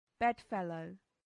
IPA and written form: ˈbɛdˌfɛləʊ (bedfellow)